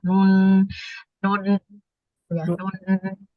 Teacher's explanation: Terus kemudian dia ada sifat istifal atau lidahnya turun dan infitah, mulutnya harus terbuka, serta dia spesialnya itu adalah gunnah. Jadi dia tuh berdengung dan suaranya itu melewati hidung dia.